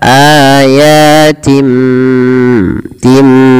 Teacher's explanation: Maka di sini kita membalikkan bunyi suara nun kepada huruf mim. Awalnya ayatin, karena ada bertemu dengan ba diganti dengan mim suara nunnya. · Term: iklab